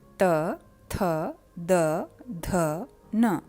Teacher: जब जीवा दांतों से टकराती है तो वर्णों का उच्चारण होता है, तो इन वर्णों का उच्चारण स्थान दंत्य है। न वर्ण के लिए हमारी जीभ थोड़ा सा पीछे हट जाती है, इसलिए इसका उच्चारण स्थान दंतमूल कहा जाता है।